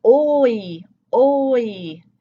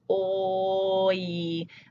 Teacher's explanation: We do a low back sound for that, one of those rounded lips, oi, to get up to the high E sound.